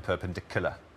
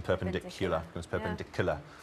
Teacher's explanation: so that Y is missing in perpendicular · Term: y dropping